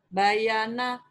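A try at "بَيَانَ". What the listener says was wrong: Bukan. Bayana, yanya panjang, Bu. Bayana.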